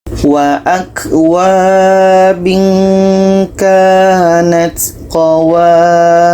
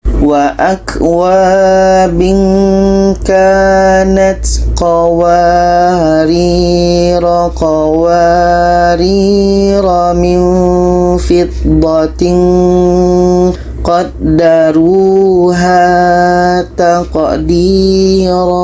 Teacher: Kalau berhenti dibaca panjang, tapi kalau kita teruskan ke ayat setelahnya itu dibaca pendek. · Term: sifir mustatil